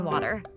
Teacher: water에서 T 발음이 R 사운드처럼 들리는 flap T 현상